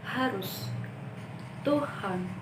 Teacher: konsonan H yang merupakan konsonan frikatif glotal. Konsonan H memiliki 2 alofon, yaitu H dan H.